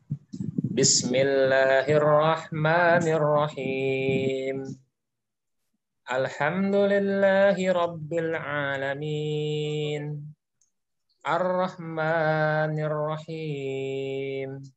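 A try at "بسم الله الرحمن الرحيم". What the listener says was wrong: Kalau berdasarkan secara umum, boleh saja seperti itu. Artinya jadi imam siap, insya Allah.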